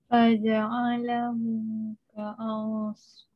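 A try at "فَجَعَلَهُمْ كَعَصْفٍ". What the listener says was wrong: Pendek ya, ka'as pendek.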